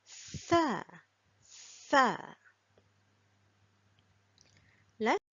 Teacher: by sticking the tip of our tongue out between the top front teeth and the bottom front teeth and make the th sound